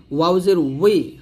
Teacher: ওয়াওটা দুই ঠোঁট গল করে উচ্চারণ করছি